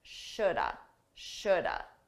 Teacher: Native speakers, we combine this to sound like shoulda. Shoulda. Notice that L is silent.